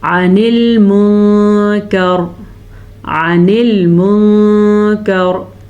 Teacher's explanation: نون ساکن کے بعد کاف ہے جو کہ حروف اخفا میں سے ہے تو نون ساکن کو ہم چھپا کے پڑھیں گے